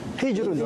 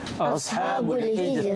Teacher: Jadi kita wakafkan semua ra ni semuanya dibaca dengan nipis